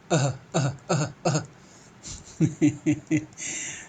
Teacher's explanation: Last में जो अह चल रहा है वो कंठ की जो ध्वनि है उच्चारित हो रही है, कहाँ से, कंठ से। कंठ वर्ण में इसकी गिनती होती है। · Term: विसर्ग